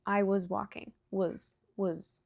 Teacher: In natural speech, was is very quick, it's very weak. Was walking, it almost sounds like was.